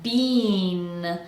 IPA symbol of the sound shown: i